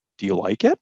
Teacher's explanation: rising tone which signals like a question do you like it that's rising tone to signal a question